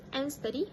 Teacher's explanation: The participant dropped the d sound, omit the d sound in the word and. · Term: d sound elision